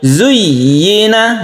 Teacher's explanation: Wa zuyyina ini harus tasydidnya harus ketara, harus jelas, tasydidnya harus ditekan ke ya. Jangan biasa saja zuyyina, tapi zuyyina, yi-nya harus jelas, ya-nya berharokat kasrah.